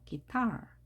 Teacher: 기 할 때 U가 발음이 되지 않았죠? I만 발음이 됐습니다.